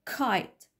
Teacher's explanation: اسبيريتد وبتكون في البدايه زي كايت